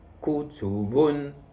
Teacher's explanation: النبر كيكون مع الإيقاع، كيكون في إلا كان عندي المقطع الثلاثي كاين النبر على الحرف الأول ديالو والحرف الثالث، مثلا كتب كتكون على الكاف وعلى الباء كنقول كتب. كذلك إلا كان خماسي كيكون على الأول وعلى الثالث وعلى الخامس.